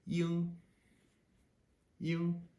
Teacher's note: You can't really draw it out because you say a Y and you hit the double E a little bit, but then you immediately dive into the NG sound. And it's just iong, iong.